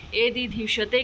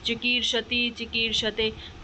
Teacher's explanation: एदिधिषते के बीच में भी मूर्धन्य शकार आ रहा है